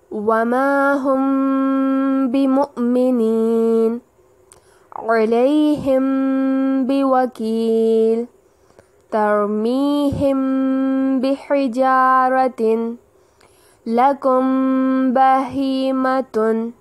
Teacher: جب کبھی میم ساکن کے بعد حرف با آ جائے، یعنی ہمیں میم ساکن کے بعد با کا الفابیٹ نظر آئے، تو غنہ کرتے ہوئے 4 کا مد دے کر پڑھتے ہیں۔